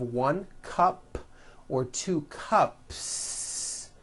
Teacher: there's no voicing at the end of that word the S remains unvoiced · if you add an S to the word cup to make it plural, the S you add also remains unvoiced